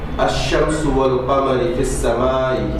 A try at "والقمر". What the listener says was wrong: Second mistake. You said wal qamari.